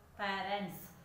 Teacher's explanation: Yesterday also we learned that parents, the ending letter is S. It is pronouncing as S only, not Z. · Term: S sound